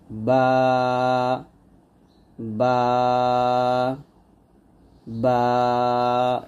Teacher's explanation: আমরা দুই ঠোট মিল করে অর্থাৎ দুই ঠোটের ভিজা অংশে মিল করে বাটা পাতলা করে উচ্চারণ করব।